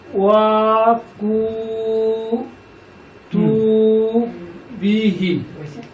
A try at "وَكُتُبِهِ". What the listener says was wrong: হ্যাঁ, হইছে, কিন্তু একটু হায়ের নিচে জের আছে, খাড়া জের।